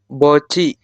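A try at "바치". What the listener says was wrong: ini vokal A berarti Baci. Anda cukup perhatikan ada tiet di akhir ketemu dengan vokal I. Maka si tiet ini yang di bawah berubah bunyi menjadi ciet seperti ini. Jadi dibacanya adalah baci. Kalau dalam Latinnya adalah baci seperti ini.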